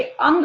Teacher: अ पहले स्वर, फिर न व्यंजन की साउंड आपको सुनाई दी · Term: अयोगवाह